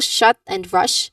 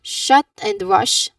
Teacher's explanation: There's no vibrations, which means that this is a voiceless sound.